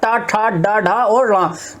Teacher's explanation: जो हमारी जीभ है थोड़ी सी मुड़ेगी, टा और जाकर पीछे लगेगी, तालु से पीछे ऊपर भाग में पीछे जुड़ लगेगी, तो वहां होता हमारा मूर्धा, ठीक है। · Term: मूर्धन्य